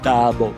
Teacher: é vogal, semibaixa, central, não arredondado